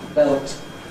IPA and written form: belt (belt)